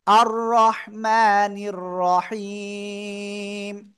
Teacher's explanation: আটা গলাটা চেপে পড়তে হবে, ঠিক আছে। আর রহ, রহ গলা চেপে হালকা বাতাস বের করতে হবে